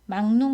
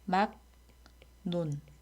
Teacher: 막론 같은 경우는 리을이 기역 뒤에 왔으니까 비음화가 일어나요. 막논.